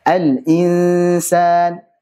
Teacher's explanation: Kalau setelahnya sin, karena sin tipis maka gunnahnya tipis.